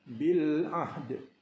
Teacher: Di sini kita berhenti pada bacaan bil ahdi dengan menyempurnakan sebutan dal secara qalqalah, kerana dal dimatikan kerana waqaf. Jadi dal ni apabila mati maka ia berlaku qalqalah dan kita sempurnakan qalqalah tersebut bil ahd.